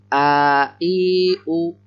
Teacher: Ini adalah Hamzah. Terletak di tenggorokan bagian bawah.